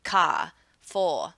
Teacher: people in the lower class are going to drop or omit the R.